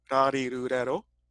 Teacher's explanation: You're tapping your tongue real fast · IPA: /ɾ/